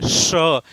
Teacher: यानी जीवा उलट कर आपका जो दांत के पीछे उभरा हुआ भाग है उससे क्या होगी? टकराएगी। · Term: मूर्धा स